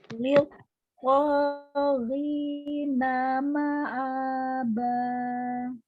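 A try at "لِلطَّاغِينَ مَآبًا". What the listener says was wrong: Memanjangkan tasydid. Liq to. Liq to. jangan lama-lama. Jangan lama-lama ya. Liq to ghina.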